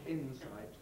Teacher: Well, clearly, insight, being made up out of in plus sight, the integrity of that morphological division is preserved phonetically, so that we say insight, the S remains in a different syllable from the N